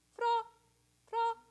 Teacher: I'm making the F and then I'm just flipping my tongue but all of it's on the same pitch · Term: flip the r